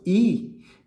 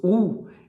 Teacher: Então, mais uma vez, i, u. Quando eu faço i, perceba que os lábios estão mais esticados. E quando eu faço u, eles estão mais arredondados. Então, em se tratando da língua membro, a diferença entre o i e u não é tão substancial, mas os lábios, a diferença entre os lábios é bastante perceptível.